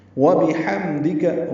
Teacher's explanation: واو با جلدی پڑھنے ہیں، ہا وسط حلق سے ادا کرنا ہے، میم سے ملانا ہے. حم یہ اظہار ہے میم ساکن میں.